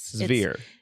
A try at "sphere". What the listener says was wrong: No, it's not sphere. It's sphere. No, sphere. Sphere. You're voicing it like a V. Severe. Because you're like Russian. Severe.